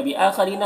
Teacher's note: हमज़ा में खड़ा ज़बर है, इसे एक अलिफ के बराबर खींचेंगे।